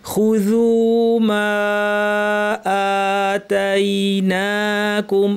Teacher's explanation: কারণ আলিফের পরে ভিন্ন শব্দে হামজা, মাদ মুনফাসিল, 2 আলিফ